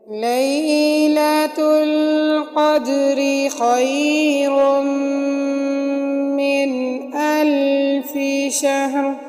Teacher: لیلۃ القدر میں قاف کو موٹا پڑھیں گے، دال کے اوپر قلقلہ کریں گے کیونکہ دال کے اوپر دال ساکن ہے اور حروف قلقلہ میں سے ہے، قدری کی را کو باریک پڑھیں گے کیونکہ را کے نیچے زیر ہے، اور یہاں پر وقف بھی نہیں ہوگا، جہاں پر لا لکھا ہو وہاں پر وقف نہیں ہوتا۔